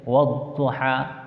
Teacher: तो ये 2 हर्फ को हम पढ़ेंगे नहीं मिला करके, इन 2 हर्फ को छोड़ देंगे। अलिफ और लाम यहाँ पढ़ेंगे नहीं, वाव को ज़ाद में मिला करके पढ़ेंगे